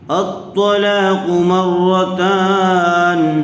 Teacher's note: میم را زبر مر، را زبر را، مر را، دیکھیے را کے اوپر تشدید ہے اس لیے میم کو را سے ملا کر پڑھیں گے۔